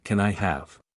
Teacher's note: The can I often blends together in fast speech, so it might sound like can I.